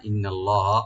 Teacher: আল্লাহ লফজ জালাল এখানে আমরা ডিপ করে পড়ব